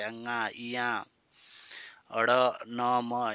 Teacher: उसको अनुनासिक कहते हैं देखो जैसे अ याया ड़ न म इनके उच्चारण में हवा नाक से निकलती है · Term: अनुनासिक व्यंजन